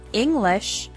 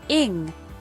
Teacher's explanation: the word English has the stress on the first syllable